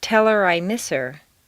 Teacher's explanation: On personal pronouns, it's common to drop the H.